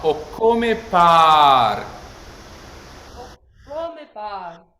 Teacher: And so this word par is really pare. So this vowel is long.